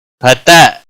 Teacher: حمزہ ساکن تھوڑا جھٹکے کے ساتھ ادا کیا جائے گا